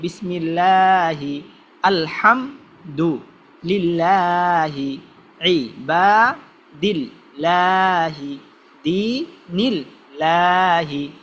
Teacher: আল্লাহ তাআলার নামকে যে পাতলা করে পড়বেন, যখন আল্লাহ তাআলার নামের আগে জের আসবে